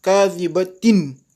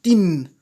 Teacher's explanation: Il est suivi par kha, donc on fait un izhar, c'est-à-dire on prononce clairement le noun.